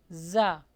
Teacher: یہاں پہ buzzing sound آئے گا